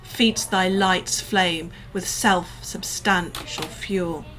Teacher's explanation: I'd probably stress the middle syllable of substantial